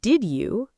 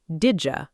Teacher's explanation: did you becomes didja through assimilation